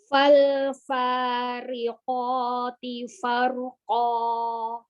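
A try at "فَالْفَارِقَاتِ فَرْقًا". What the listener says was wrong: Taknya tipiskan lagi ya.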